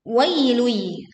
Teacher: Wai bukan dibaca wai, tetapi wai. Lui, leburkan dhamma tanwin ke huruf ya disertai dengung sehingga tidak tergesa-gesa